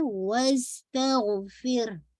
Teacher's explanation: सीन पे whistling, गाइन पे आवाज चलती रहे